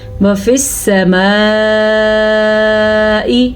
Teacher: جو مد آپ کو نظر آ رہی ہے یہ مد 3 سے 4 سیکنڈ تک لمبی کی جانے والی مد ہے۔ اگر ہم اس کو سمجھنے کی کوشش کریں تو یہ 5 حرکات عربیہ کے برابر ہے۔